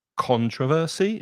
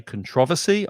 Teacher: some people pronounce it controversy, stressing the first syllable. I say controversy, I stress the second